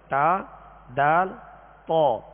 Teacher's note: تا، دال، طا ان کا ایک ہی مخرج ہے، اور وہ یہ ہے زبان کی نوک اوپر کے دانتوں کی جڑ. زبان کی یہ نوک اوپر کے جو 2 دانت ہیں سامنے والے، ان کی جڑ اندر کی طرف جو اس کی جڑ ہے یہ اس سے ادا ہوتے ہیں، یعنی ان کا ایک ہی مخرج ہے، تا دال تو۔